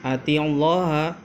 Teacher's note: kalau Allah ini tebal maka disebut dengan lafdzul jalalah tafkhim